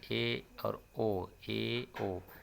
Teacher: अर्ध संवृत स्वर के उच्चारण में मुख द्वार कम सकरा होता है, यानी मुख द्वार हल्का सा खुलता है थोड़ा सा, तो उसे अर्ध संवृत स्वर बोलते हैं।